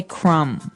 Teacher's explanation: the word crumb has a B on the end, C-R-U-M-B, but we don't pronounce the B. We just say crumb.